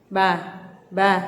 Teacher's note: Bibir atas dan bibir bawah ini nempel. Ba. Jangan juga ba, itu berlebihan ya.